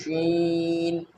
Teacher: शीन का मखरज है ज़ुबान का बीच का हिस्सा जब ऊपर के तालु से लगे शीन अदा होता है।